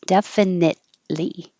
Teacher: don't release the t just hold it because it's in the same place as the l